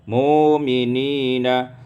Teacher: ibdalul hamzati wawan, ditukar hamzah dengan waw, mu'minina.